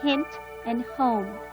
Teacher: the same glottal fricative as the h sound in hint and home